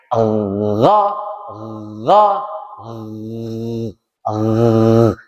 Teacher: harus ada kasar-kasarnya sedikit, ada gerenjel-gerenjelnya. Dipegang, dirasakan.